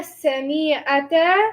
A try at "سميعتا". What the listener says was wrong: The sami was too long.